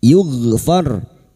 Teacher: Huruf gin memiliki sifat jahar dan rakhah tertahannya nafas dan mengalirnya suara. · huruf gin sukun hati-hati tertukar k dan jangan sampai dipantulkan ya jangan dibaca yugfar ya jangan dipantulkan karena bukan qalqalah.